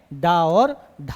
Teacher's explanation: जीभ जो है ऊपर टच करती है और झटके से क्या होगी, नीचे गिरेगी, उसको ही हम क्या कहेंगे, उत्क्षिप्त व्यंजन कहेंगे।